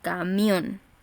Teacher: es una palabra que se acentúa en la última sílaba es una palabra aguda cierto nos damos cuenta también que tiene